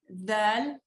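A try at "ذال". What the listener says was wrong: Your tongue needs to bring it out more and vibrate. Do you hear the vibration sound? Zal.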